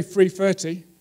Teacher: Replacing the th with a f.